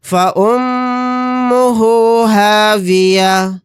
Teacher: میم کے اوپر تشدید ہے تو یہاں پر ہم غنہ کر کے پڑھیں گے.